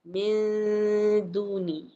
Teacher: Hujung lidah tak boleh tekan ke atas. Dia kena samarkan bunyi nun tu. Sambil dengung nipis. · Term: ikhfa hakiki